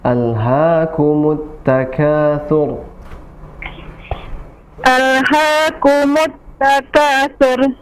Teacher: Sur tebal ya, tafkhim